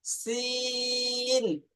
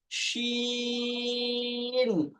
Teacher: প্রথমটা হলো পাতলা আওয়াজে সিন, তারপর এটা তালবের শ দিয়ে মোটা আওয়াজে শিন।